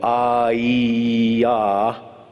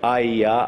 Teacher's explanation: if you make the vowel long, it's the vowel E. But if you make it short, I-ya, then the E becomes a Y. They're both pronounced in exactly the same place in the mouth and so forth.